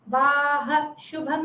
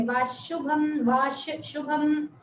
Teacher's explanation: जैसे ये विसर्ग नहीं हो, शकार हो